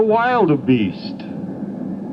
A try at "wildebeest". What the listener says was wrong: Why do you put the A in? You sound like you're talking with an accent. No, it's wildebeest.